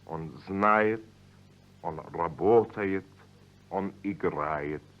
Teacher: The ending is spelled yet, but pronounced yit, because the vowel isn't stressed. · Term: unstressed ye